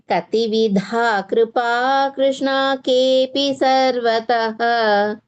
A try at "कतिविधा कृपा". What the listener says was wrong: But now you recited correctly taha, but while you're reciting the entire shloka, You're saying taha, you're dragging it. It sounds like dirgha. You should avoid that.